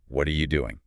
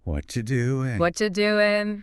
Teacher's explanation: you see how what do you just squishes into what you